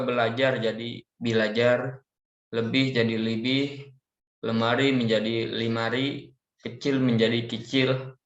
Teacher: Karena ketika orang Arab mengucapkan kalimat ini, maka pengucapan E dalam bahasa Indonesia diucapkan menjadi huruf I. Karena vokal E tidak ditemukan pada bahasa Arab, maka mereka mengubahnya menjadi vokal terdekat, yaitu huruf I atau kasroh.